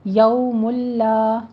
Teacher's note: یو میں واو لین ادا کریں گے، ہونٹوں کو تمام گول کرتے ہوئے